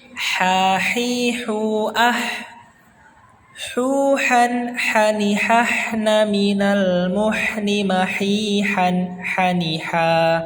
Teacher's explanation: huruf H ini kita cara mengeluarkan nafasnya lebih banyak dibandingkan huruf-huruf yang lainnya ya. Lebih banyak dan lebih halus cara mengeluarkannya.